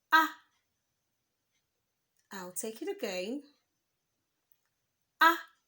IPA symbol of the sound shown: æ